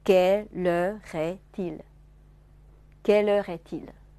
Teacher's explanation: 所以在这个句子里面，er▁的重音消失了，就是▁er▁不是重音。既然它不是重音，长音也消失